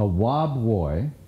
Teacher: The husband pronounced his R's as W's. A speech defect called R labialization